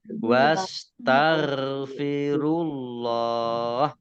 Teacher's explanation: Allahnya dibaca tebal karena harokat di depannya dhammah.